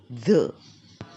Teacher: it's a voice sound so you can feel your tongue have a vibration when you say this